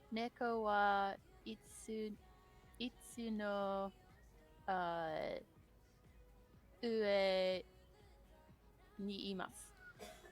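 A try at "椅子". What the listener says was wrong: No T sound. You keep sneaking in that T sound, which is probably part of the accent.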